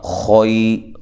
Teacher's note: بالذی ہوا خیر، باللہ لام کو لمبا نہیں کرنا، ذی یا مدہ ہے، ہوا دونوں کو لمبا نہیں کرنا، خوئی خوا کو موٹا پڑھنا ہے، یا لین ہے